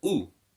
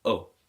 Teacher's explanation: the Dhamma is pronounced as U, a sharp upward pronunciation rather than O